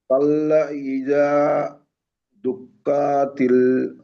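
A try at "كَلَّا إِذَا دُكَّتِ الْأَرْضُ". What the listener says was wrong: টান হয়ে যাচ্ছে। কাল্লা, এখানে মাদ আছে না? মাদে টান দেন।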